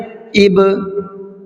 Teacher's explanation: تو وہ جو ہٹنے کا جو ساؤنڈ ہے لگنے کے بعد میں جو ڈبل ساؤنڈ ہو رہا ہے، اس ڈبل ساؤنڈ کو، ڈبل آواز کو قلقلہ کہتے ہیں · حمزہ با زیر اب، حمزہ با پیش اب، تینوں جگہ پر مخرج کی جگہ اپنی جو ہے ہونٹ آپس میں ٹکر کھائے اور الگ ہو گئے، اور ایک الگ سا ساؤنڈ بعد میں نکلا ہے